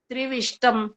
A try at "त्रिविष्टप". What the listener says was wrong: त्रिविष्टप, प है ये। हाँ, म नहीं है।